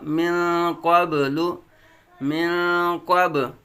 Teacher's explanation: با ساکن حروف قلقلہ میں سے قلقلہ خوب ظاہر ہوگا